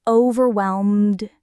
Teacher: Overwhelmed is interesting because that final D is very soft. Almost like it blends into the M before it.